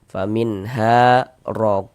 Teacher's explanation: Maka huruf ro dibaca tebal, dibaca tabkhim. Sehingganya pangkal lisan kita naik terangkat ke atas ketika kita mengucapkannya.